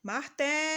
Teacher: a sílaba que a gente demorou mais pronunciando foi o té. O té é a penúltima sílaba da palavra.